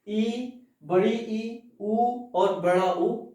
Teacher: संवृत का मतलब होता है जिनको बोलने में बहुत कम मुख खुले, जिन्हें बोलने में बहुत कम मुख खुले उन्हें संवृत कहते हैं।